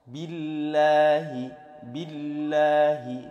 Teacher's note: lafzul jalalah yang didahului berharokat kasrah, maka dia statusnya billahi, tipis. Dibaca tipis, bukan billahi, bukan, tapi billahi.